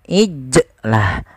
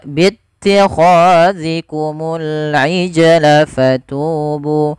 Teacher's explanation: Yang tepat adalah dia membaca qalqalahnya sambil mengalir saja sesuai dengan huruf jimnya.